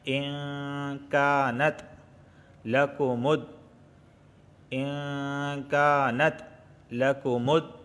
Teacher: قل یہاں دیکھیں نون ساکن کے بعد کاف آیا ہے اور کاف حروف اخفا میں سے ہے، تو اخفا والا غنہ ہوگا، یعنی نرم غنہ ہوگا، یعنی زبان کی نوک اوپر کے تالو سے نہیں لگے گی۔